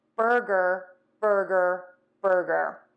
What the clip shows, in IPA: ˈbɜrɡər